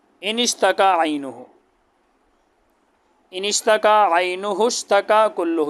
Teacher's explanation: اس کا یہ حمزہ جو ہے یہ وصلی ہے، یہ درمیان کلام میں گر جاتا ہے